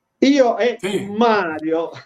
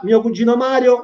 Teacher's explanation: la M suona forte, perché c'è questo raddoppiamento fonosintattico che va rispettato